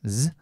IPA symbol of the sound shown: z